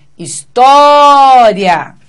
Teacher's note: Essa é a sílaba tônica e, na sequência, nós temos um ditongo. Em história, o tó é a sílaba tônica e, na sequência, nós encontramos um ditongo.